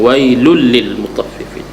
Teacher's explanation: Wailun, wai maknanya maklin, lun nun tanwin bertemu dengan lam, idgham bila gunnah, tidak dengung. Lun li, jangan dengung langsung lah, maknanya kena jelas, tidak dengung.